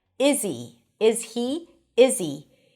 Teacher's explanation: when it's unstressed or in the middle of the sentence, which is usually the case, we drop the H and we just pronounce it as E.